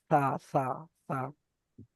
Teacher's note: এখানে আপনার জিভের আগা এবং সামনের উপরে 2 দাঁতের আগার সঙ্গে লাগিয়ে উচ্চারণ হবে সা, সা, সা।